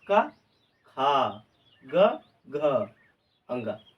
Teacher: इस खा पे लगा जोर और घा पे लगा जोर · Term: महाप्राण